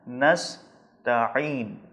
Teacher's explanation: عین پر زور لگانا ہے، حلق کے وسط اور درمیان والے حصے سے ادا کرنا ہے